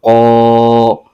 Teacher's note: قوف حروف مستعلیہ کا حرف ہے، اس کو پر یعنی موٹا کر کے بھی پڑھیں گے۔